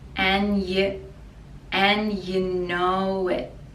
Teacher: the d for and we don't pronounce